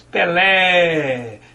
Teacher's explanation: Vejam que esse ele vai como se fosse um eco. Isso porque a sílaba lé é a sílaba tônica, a sílaba que pode ser prolongada.